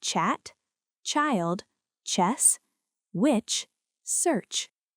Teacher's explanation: This is an affricate sound, starting with /t/ and releasing into /ʃ/. · The letter group CH is commonly pronounced ch, as in chat, child, chess, witch, search. This is an affricate sound, starting with t and releasing into sh. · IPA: /tʃ/